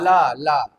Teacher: पार्श्विक का मतलब होता है जीभ के किनारों से वायु का निकलना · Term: पार्श्विक ध्वनि